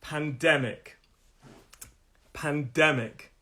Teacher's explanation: The stress is on the 2nd syllable.